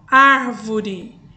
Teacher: é chamada de paroxítona e por último temos aí a proparoxítona é a palavra em que a sílaba tônica é a antepenúltima sílaba